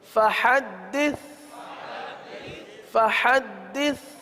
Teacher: سا میں زبان کا سرا اوپر کے دانتوں کے اندرونی کنارے پر لگتے ہیں تو سا کی ادائیگی ہوتی ہے، اس میں سیٹی کی آواز نہیں آتی